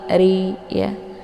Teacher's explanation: ra-nya dibaca tipis ya, karena ra-nya berharakat kisrah ya, dengan posisi mulut itu terbuka lebar